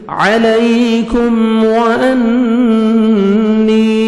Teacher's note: نون مشدد نوز میں ساؤنڈ لے کے جائیں گے